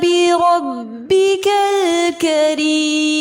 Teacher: بربک الکریم لام لام قمریہ ہے. زیر کی صورت میں را کو باریک پڑھیں گے اور مد عارض کے ساتھ وقف کیا جائے گا.